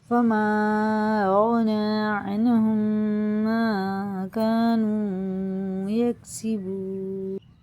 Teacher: ادغام شفی یعنی میم ساکن کے بعد میم آئے تو میم کو میم سے ملا کر غنہ کے ساتھ پڑھا جائے